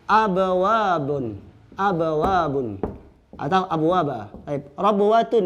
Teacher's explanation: Ba sukun, waw harkat. Di sini sama makhrajnya di mana? Bibir. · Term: mutajanisain